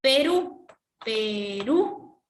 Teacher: En la U está la mayor fuerza de voz.